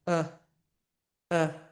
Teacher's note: We're going to reduce it to a neutral completely relaxed sound that is called the schwa sound